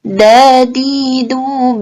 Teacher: antara lidah dengan pangkal gigi seri atas